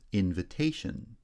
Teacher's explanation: secondary stress on the first syllable primary stress shifts to the third syllable